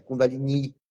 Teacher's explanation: só que é um i longo, é Kundalini, é um i longo, entende? É um i longo, porque é aquela a fonética nacional, aquela barra em cima do i.